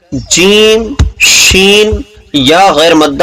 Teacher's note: تو ان کا مخرج بیچ زبان تالو سے مل کر جیم، شین یا غیر مدہ ادا ہوتے ہیں.